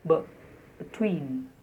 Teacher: So the first syllable is almost like the schwa sound